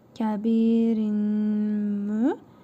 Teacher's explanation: Tənvindəki nun hərfini burnumuzda tələffüz edərək bir əlif miqdarı uzadırıq. Mim hərfini isə şəddəli tələffüz edirik. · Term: İdğam məalqə qaydasıdır